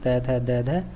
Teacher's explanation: जीभ दांतों को छूती है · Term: दंत्य वर्ग